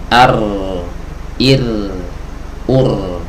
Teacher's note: agar suara huruf ro itu bisa keluar Ar Ir ur ya jadi dia bergetar tapi tanpa melepaskan ee bagian ee ujung lidah dari gusi ya jadi dia menempel terus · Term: huruf ra